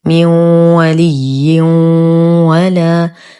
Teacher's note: لدينا تنوين وبعده حرف الواو، الحكم إدغام ناقص